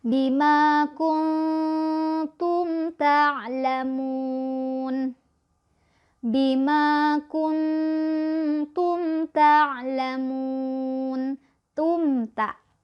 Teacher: Mim sukun bertemu dengan huruf ta, maka mim sukunnya akan kita baca jelas, tidak boleh ditahan, tidak boleh didengungkan. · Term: idhar syafawi